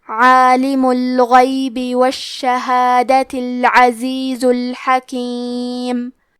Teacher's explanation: کلمت الشہادہ میں شین پہ تشدید ہے تو ہمیں 2 حرف کے برابر شین کو پڑھنا ہے، تاکہ نیچے زیر ہے تو ہم زیر کو ظاہر کریں گے۔